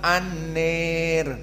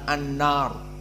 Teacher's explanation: Ra sakinah di akhir dan sebelumnya alif. Maka Abu Amr membaca an-nir, bukan an-nar, seperti Hafs an Asim. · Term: al-imalah al-kubra